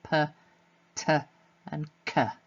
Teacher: the p, again bilabial plosive in this case, t alveolar plosive, k velar plosive. Okay, so depending on whereabouts in the mouth the tongue is, will often tell us what sort of sound it is. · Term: voiceless plosives